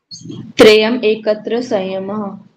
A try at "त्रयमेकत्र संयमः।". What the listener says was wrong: ऐसे नहीं बोलेगा ये, त्रयम एकत्र नहीं बोलेगा, त्रयम मैं के ऊपर ही एक ही मात्रा, त्रयम एकत्र संयमः। हाँ, त्रयम एकत्र संयमः।